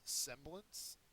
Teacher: semblance is a noun first syllable is accented